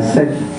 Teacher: it's a diphthong, two vowel sounds together, and it's a little bit too long